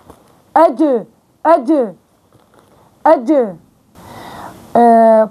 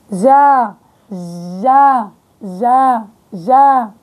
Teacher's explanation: وسط اللسان مع الحنك الأعلى